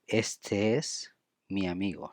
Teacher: Este es, we link EE, and mi amigo, we link I and A